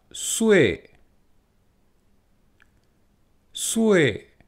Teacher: le s se fait bien avec la langue derrière les dents du haut comme pour nous